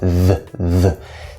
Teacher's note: This TH is a hard TH, which is voiced, the. Same position, same basic sound.